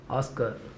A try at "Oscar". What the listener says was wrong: ఆర్ కొంచెం మళ్ళీ miss అయింది.